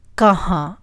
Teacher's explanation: There is a nasal sound in the end.